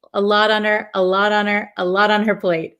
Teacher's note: this T in a lot becomes a flap T. So it almost sounds like a D.